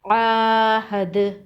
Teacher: وقف کی صورت میں دال پر قلقلہ ہوگا